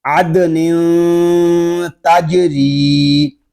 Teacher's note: دال ساکن اور جیم ساکن میں خوب کلکلہ ظاہر کریں گے